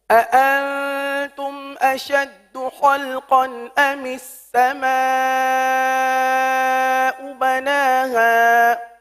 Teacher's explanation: اَأَنْتُمْ تو حمزہ سختی کے ساتھ ادا ہوتا ہے